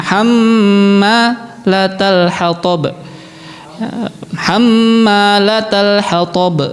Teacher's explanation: Mim nun yang di tasdid. Harus kelihatan banget gunahnya.